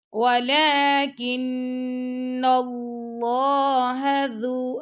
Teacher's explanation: ولیکن لام پر کھڑا زبر، لام کو دو شکل لمبا کرنا ہے